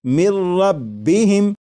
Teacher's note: لکھا ہوا ہے من، لیکن جب نون ساکن کو را میں ملا کر پڑھیں گے تو پھر نون ساکن کی آواز نہیں آئے گی، بلکہ میم کے بعد را کی آواز آئے گی، اور یہاں پر غنہ نہیں کریں گے اور اسے پڑھیں گے مر ربہم۔ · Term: ادغام